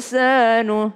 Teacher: Nun ketemu dengan sin maka berdengung ikhfa